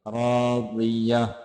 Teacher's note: राज़िया, रा वा दोनों को मोटा करके पढ़ेंगे